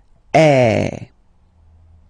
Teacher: So it's really open. I mean, the sound is really open, and normally your mouth should be opened a little bit more than with the accent aigu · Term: accent grave